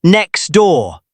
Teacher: The T disappears. It becomes next door.